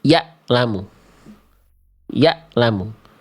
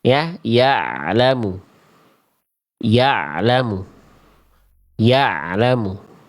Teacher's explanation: Kalau hamzah itu suaranya terputus. Ya, lamu. Ya, lamu. Tapi kalau ain suaranya harus sedikit ngalir.